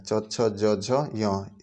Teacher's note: च का उच्चारण स्थान तालू होता है च छ ज झ य इसका उच्चारण स्थान तालू होता है